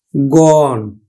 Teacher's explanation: তাহলে আদ্য অটা কিন্তু ওকার না হয়ে আর শেষে কি আছে মূর্ধন্য ন, মূর্ধন্য ন থাকার ফলে এখানে কিন্তু সংবৃত উচ্চারণ হবে না, আমরা উচ্চারণ করি কিন্তু গণ। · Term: স্বাভাবিক উচ্চারণ